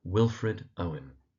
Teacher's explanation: the emphasis in Wilfred is on the first syllable and in Owen again it's on the first syllable